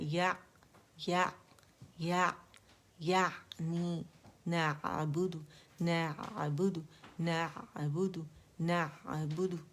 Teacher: عین کا مخرج وسط الحلق، ٹھیک ہے. حلق پہ آپ نے جانا ہے.